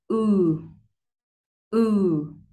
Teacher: Back of tongue up. Gốc lưỡi thì sẽ nâng lên và mình kéo dài âm một chút xíu để cho nó rõ âm u ha. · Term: âm U dài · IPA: /u:/